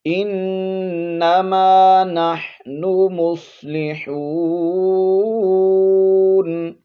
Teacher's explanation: نون پر شد ہے غنہ کریں گے، ناک میں آواز کو چھپائیں گے